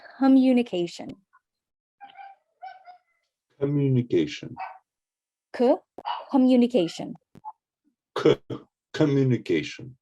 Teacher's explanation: I want more air on the k